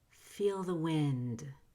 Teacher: ND at the end of a phrase has a very quiet, whispering D. It's not a held D, as in feel the wind.